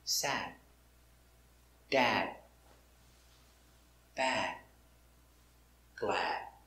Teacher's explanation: You don't make a complete D, no sad D. Make a stop D. You put your tongue up and stop.